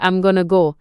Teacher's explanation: For instance, when a native speaker says I'm going to go, the words often link together and might sound like I'm gonna go instead of each word being pronounced separately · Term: connected speech